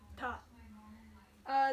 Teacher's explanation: the retroflex T, which is ta.